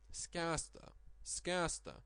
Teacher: In the old times, people said skansta, and the consonant disappeared, the vowel lengthened, and it is now written with nosinė. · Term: long vowel nosinė